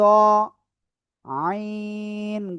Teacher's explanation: গলা চেপে 4 আলিফ টেনে উচ্চারণ করতে হবে